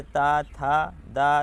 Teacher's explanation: दंत से यानी कि ऊपरी दांतों के निकट से